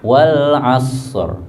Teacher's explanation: As disempurnakan desisnya atau hamesnya, kemudian dikasih ro mati